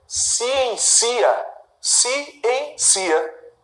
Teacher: O i é bastante fraco. Então eu vou marcar como semivogal. E o A é forte.